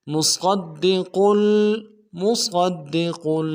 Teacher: सौद को मोटा करेंगे, दाल के साथ मिलाना है, दाल के ऊपर तशदीद जोर देंगे